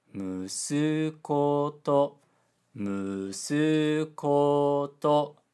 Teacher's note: Musuko to, musuko to, low high high high. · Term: pitch pattern